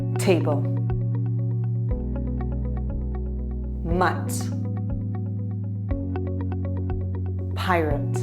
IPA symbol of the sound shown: t